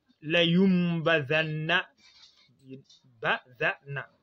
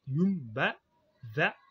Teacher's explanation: Ceci montre que le an doit être remplacé par am. Quand la an sakina est suivi de ba, donc il est remplacé par un am. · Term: iqlab